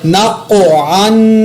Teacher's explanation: یہاں پر میں نے قاف پر قلقلہ بھی کیا، قاف کو پر بھی پڑھا اور عین کے اوپر تنوین پر غنہ بھی کیا۔